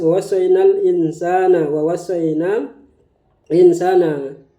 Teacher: Insya ikhfa ya. Nun ketemu dengan sin dibaca samar. Sehingga nun kita baca seperti huruf sin insan.